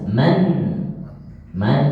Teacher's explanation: kalau ini izhar maka dibaca nunnya jelas